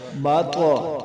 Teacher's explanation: یہ توا جو ہے یہ درمیان میں ہے اور حروف قلقلہ سے ہے اور ساکن بھی ہوگی تو اس لیے اس پر قلقلہ ہوگا